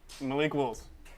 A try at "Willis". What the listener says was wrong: There is an I in Willis, though.